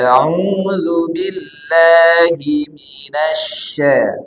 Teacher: Hi tidak boleh masuk ke hidung tidak boleh auubillahi gak boleh Hi sempurna dari rongga mulut auubillahi minasya minasya nah ini huruf syin ya kalau auzubillahi nanti